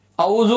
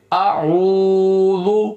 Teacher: حمزہ کی آواز الگ گائے گی عین کی آواز الگ گائے گی. حمزہ کو زبر کے ساتھ پڑھیں گے اور عین کو پیش کے ساتھ کھینچ کر بولیں گے